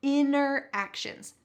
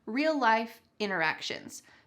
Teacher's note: Notice the pronunciation here, interactions. The T has been completely cut out.